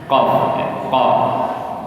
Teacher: yaitu pangkal lidah bertemu dengan langit-langit bagian yang lunak. Jadi langit-langit atas kita itu yang bagian belakang, itu ada bagian yang lunak dan ada bagian yang keras. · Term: huruf qaf